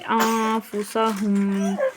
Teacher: انفسهم میں یہاں پر اکفا ہوگا، یعنی اس کے نون کو ناک میں پڑھیں گے